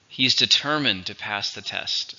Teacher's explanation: It's an adjective. 3 syllables, stress on the second.